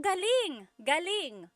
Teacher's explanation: if the emphasis is on the second syllable galing that means good or great or excellent